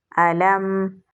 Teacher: मीम साकिन के बाद नून है तो यहाँ पर हम इजहार शफवी करेंगे। मीम में सिफ्त तवस्सुत पाई जाती है तो इसे हम थोड़ा जारी रख के पढ़ेंगे